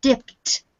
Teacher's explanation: you get a very distinct t sound on the end